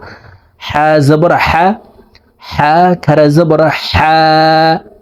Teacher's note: হলকের মধ্যখান থেকে উচ্চারণ করে আদায় করে পড়বো